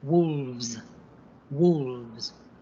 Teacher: we need to use the slightly vibrating V, and the S sound like a buzzing Z sound